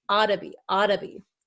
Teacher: this double T here becomes a flap T which sounds like a D sound